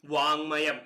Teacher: പൂർവ്വപദത്തിന്റെ ഒടുവിലുള്ള ഖരവർണ്ണം മൃദുവാകുകയല്ല ആ വർഗ്ഗത്തിലെ അനുനാസികമായി തീരുകയാണ് ചെയ്യുന്നത്